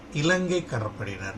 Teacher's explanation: ல நுனி நாக்கு மேல் பல் வரிசையின் உட்புறத்தை தொட வேண்டும் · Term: சின்ன ல